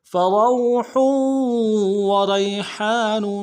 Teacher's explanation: را کو یا کے ساتھ ملانا ہے اور موٹا ادا کرتے ہوئے یا لین بغیر کھینچے پڑیں گے، ہا کے ساتھ الف مدہ ہے، ہا کو گہرائی سے ادا کریں گے ، الف مدہ کو ایک مقدار میں کھینچیں گے، نون کے